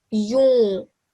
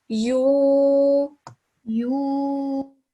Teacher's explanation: Try to refrain saying this word from your nose. This time saying it without it.